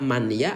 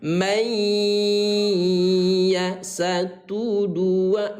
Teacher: suara ya yang bertasdid inilah yang dibaca tahan 2 ketukan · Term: idgham bi gunnah